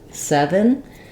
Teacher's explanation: my first letter e is a clear vowel it's stressed I hold it longer it's just like um in the word set or get get